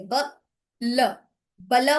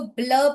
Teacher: then we call this as ब्ल, ब एंड ल both together running smoothly all together, both the sounds are coming